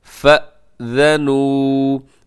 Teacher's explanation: آگے جھٹکا ہے کیونکہ فا کے بعد حمزہ ہے